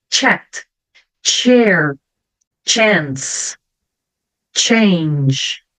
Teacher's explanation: o som do C normalmente eu vou falar como se eu tivesse um t na frente tá como se eu tivesse um t para falar a palavra